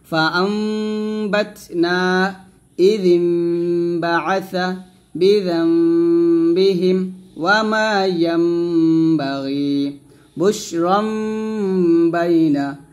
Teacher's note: নুন সাকিনের পর বা পাইলে আমরা সেখানে অবশ্যই গুণনা করব। এখানে মিন না বলে মিম বলবো। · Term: ইকলাব গুণনা